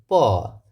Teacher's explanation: Well, whenever do we produce the bilabial consonant, we use both the lips like p. In producing the sound of p, we use both the lips.